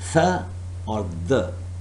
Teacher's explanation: the tip of the tongue is touching the back of the front teeth and then it is producing the or the this is what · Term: dental sound